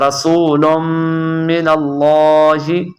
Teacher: لام کو آپ نے لمبا کرنا ہے، ہا کو زیادہ لمبا نہیں کرنا ہے